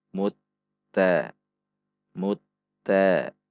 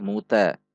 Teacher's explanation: Mim dhammah masuk ke huruf ta bertasydid. Berarti dibaca masuk. Ada tekanan pada huruf ta.